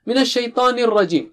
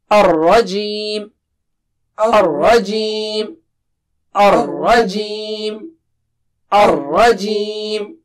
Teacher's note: Ra is thick here. It is not English R.